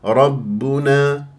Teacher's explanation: الباء شديده مجهور من غير ان اجري فيها النفس